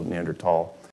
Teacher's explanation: the Germans pronounce it with a hard T so neander tall that's how I